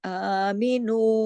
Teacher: کھڑی زبر 2 حرکات کھینچی جاتی ہے، ایک الف کے برابر